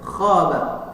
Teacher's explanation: maka itu huruf tebal, huruf kha, ya. Ucapannya seperti mengorok, seseorang mengorok